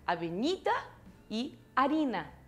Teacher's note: tanto avenida como harina não começam com nem A nem H tônicos. Olha onde é que está a sílaba tônica.